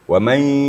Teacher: Sekarang nun sukun bertemu dengan ya. Wa may, jadi suaranya full ke hidung sedikit. Jangan hanya sekadar tasydid, tetapi ada gunnahnya. Ma'al gunnah serta gunnah. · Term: idgham ma'al gunnah